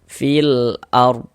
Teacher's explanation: Alif lam qamariyah itu disebut juga dengan izharu qamariyah, karena cara membaca huruf lamnya dibaca izhar, terbaca dia dengan jelas begitu. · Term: izharu qamariah